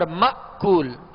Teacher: یہاں حمزہ ساکن ہے، حمزہ کو جھٹکے کے ساتھ ادا کریں گے